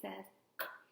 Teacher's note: So when I make the k sound, my mouth is open, my tongue is down, and my tongue is pushed back. And the k sound, our voice is off. So you should not feel vibration in your throat.